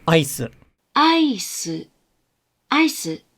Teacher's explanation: the pitch starts high and then it goes low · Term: accent